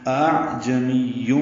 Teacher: یہ جو تجوید کی اصطلاح ہے اس میں حمزہ کو خود اس کے اور الف کے مخرج کے درمیان پڑھنا، یعنی نرم کرنا. الف اور حمزہ کے مخرج کے بیچ میں پڑھیں گے تو پہلا جو حمزہ ہے یہ واضح ہوگا، اس کی صفت جہر ظاہر ہوگی، شدت ہوگی اس میں، دوسرے میں نرمی ہوگی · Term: تسہیل